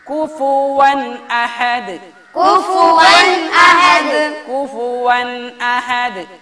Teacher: ഫ ഫ ഫ വാവ് പറയുന്ന മഖ്റജ് എന്ന് പറയാൻ പാടില്ല ഫ അതേസമയത്ത് വാവ് പറയേണ്ടതോ വ രണ്ട് ചുണ്ടുകളെ കൊണ്ട് മാത്രമാണ്